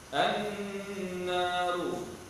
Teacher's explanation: An-naru, alif lam pada an-naru, alif lam al-syamsiyah, nun yang bersatu, wajib al-gunnah, wajib dengan dua harakat